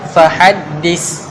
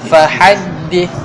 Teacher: hujung lidah duduk di antara dua gigi kacil sebelah depanung lidah hujung lidah sikit a duduk antara dua gigi kaca